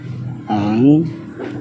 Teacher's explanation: huruf ain dalam tabiat aslinya ketika disukun suaranya akan berhenti secara berangsur setelah mengalir beberapa saat